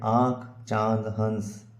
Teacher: अनुनासिक वे स्वर ध्वनियां जिनके उच्चारण में हवा मुख के साथ नाक से भी निकलती है